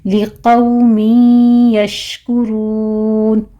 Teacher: قوف کو پر پڑھتے ہوئے واو لین ادا کرنا ہے ، آگے تنوین کا قاعدہ ادغام الغنہ ہے، 2 کاؤنٹ کر